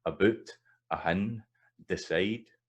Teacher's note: So the vowel in these unstressed words tends to reduce a wee bit. It's a wee bit less the full vowel. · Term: reduced